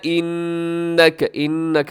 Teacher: انک نون مشدد پہ غنہ کیجیے گا